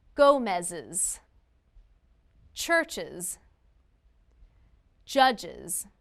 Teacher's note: We make the uz sound after these sounds. S, z, sh, ch, or j.